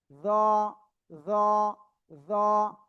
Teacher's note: জিহ্বার আগা, উপরে 2 দাঁতের আগায় লাগান, আমার মতো লাগান লাগান লাগান, লাগিয়ে এবার আপনি উচ্চারণ করেন জ জ জ।